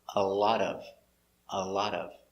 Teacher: put the words together with the T sounding D